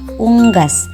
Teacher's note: vokal u tinggi atas belakang bundar pada kata unggas yang kedelapan ada vokal u tinggi bawah belakang